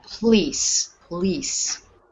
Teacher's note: The P-O is almost like PL, police, police. So the O is not stressed at all, and we put all the stress on the end.